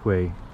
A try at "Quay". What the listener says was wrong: Key. That says key in English. Key. I know it says quay, but it means key. You say key. Key soldier. You don't say quay soldier.